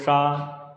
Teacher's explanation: इसको बोलोगे तो जीवा जो तालु के ऊपर का धसा हुआ भाग है उसमें जाके टच होगी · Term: मूर्धन सा